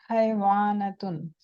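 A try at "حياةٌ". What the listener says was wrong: हयातुन, हयातुन, वो वाव साइलेंट हो जाता है।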